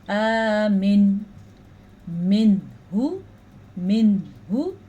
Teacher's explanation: میری بھی زبان کے کنارے اوپر والے دانت جو ہیں سامنے کے سائڈوں کے ان سے ٹچ ہو رہے ہیں اور پھر زبان اوپر چپک رہی ہے، اسی سے یہ نون ادا ہو رہا ہے